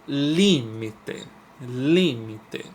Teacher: o Li é a mais forte é a tônica